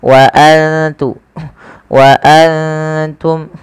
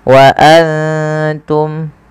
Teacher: Kita baca dengan bacaan ikhfa, yaitu cara membacanya menyamarkan suara nunnya kepada huruf ta.